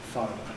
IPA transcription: ˈfɑːrmər